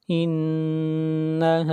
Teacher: نون کے اوپر شد ہے، آواز ناک میں جائے گی